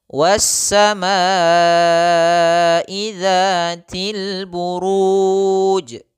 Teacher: 'ru ' panjang karena berada di akhir kalimat dan bertemu dengan 'sukun arid'. Sukun yang muncul karena kita berhenti. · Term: mad arid lisukan